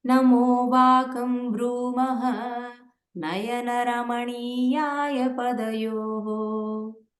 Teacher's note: So the sa from the second line is becoming visarga at the end of the first line.